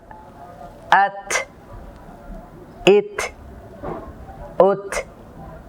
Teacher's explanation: যখন তার মধ্যে সাকিন হয় তখন সামান্য শ্বাসের আওয়াজ আসে। এর কারণ হলো এর মধ্যে একটি সিফাত পাওয়া যায় হামস।